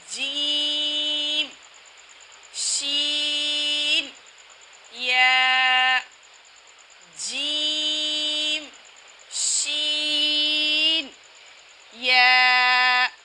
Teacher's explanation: جیم شین یا جو ہے زبان کا درمیان جب تالو کے درمیان سے لگے گا تو ادا ہوں گے۔ ان کی آوازیں الگ ہیں لیکن مخرج ایک ہے۔